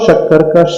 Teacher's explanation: ऊपर के तालु में टच होती है तब वह शक्कर का श का उच्चारण होता है